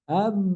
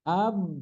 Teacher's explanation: Mim itu jadi huruf ba kalau enggak pakai hidung. Am. Akhirnya keluarlah lewat hidung.